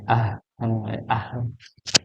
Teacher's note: kalau ha itu kan dia di tenggorokan bagian bawah nggih, paling dalam, pangkal tenggorokan